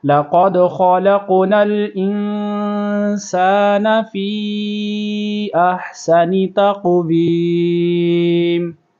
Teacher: رہا ہے، خلق اور خا کو پر کریں گے، خلق نل، آگے اخفا ہو رہا ہے، سان سین کی سیٹی کی آواز آئے گی